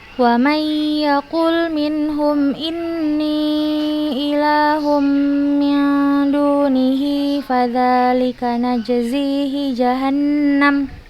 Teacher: Itu di kata dunihi. Nah, ha domir yang berharokat kasroh, yang sebelumnya dan setelahnya nggak ada huruf sukun dan juga bukan huruf hamzah, maka kita baca dua harokat